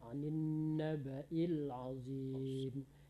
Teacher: Nabanya jangan dipanjangkan